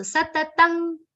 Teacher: Satatam, anuswar will be pronounced like nga.